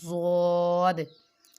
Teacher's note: ہوتی ہے، صاد۔ زود، زود بھی موٹے حروف میں سے ہے، زبان کے کناروں سے ادا ہوتا، موٹی سائڈ سے ادا ہوتا ہے